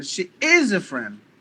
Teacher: you're giving more volume to the word is